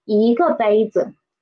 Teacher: So in this phrase, 一个杯子, there are two neutral tones. One is 个, one is 子